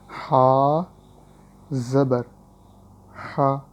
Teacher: اس لیے زبر بولنے کے بعد تھوڑا سا ویٹ کریں، انتظار کریں، اس کے بعد بولیں، رک کر بولیں تھوڑا سا۔ ہا زبر ہا، حلق کے درمیان سے ہی پڑھنا ہے اور کھینچنا بھی نہیں ہے